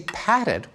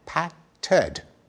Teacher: when we say patted, we stick in a vowel, patted, showing that the same suffix, ed, can be readjusted in its pronunciation according to the rules of English phonology.